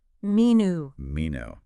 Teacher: Let the second syllable be a little softer